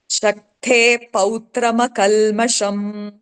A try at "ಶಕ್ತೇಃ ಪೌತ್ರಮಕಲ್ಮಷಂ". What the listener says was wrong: ಶಕ್ತೇ ಸ್ವಲ್ಪ ಅಂತ ಬರ್ಬೇಕಲ್ಲಿ. ಬಂದಿಲ್ಲ ತರ್ಸಿ. ಶಕ್ತೇ ಪೌತ್ರಮ ಕಲ್ಮ ಶಕ್ತೇಹೇ ಪೌತ್ರಮ ಕಲ್ಮಷಂ. ಆ ಏಹೇ ಅಂತ ಹೋದ್ರೆ ಛಂದಸ್ಸು ಮೀರಿ ಹೊರಟೋಗುತ್ತೆ ಸ್ಕೇಲ್ಗೆ. ಅದಕ್ಕೆ ಅನ್ನೋದು ಅಲ್ಲಿ ಸೌಂಡ್ ಬರ್ಬೇಕು ಬಾಯಲ್ಲಿ.